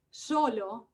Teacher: tenemos la variante apical solo que es bastante común en españa